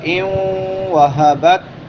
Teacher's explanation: نون ساکن کے بعد حروف یرملون میں سے واو آ گیا ہے تو ادغام مع الغنہ ہوگا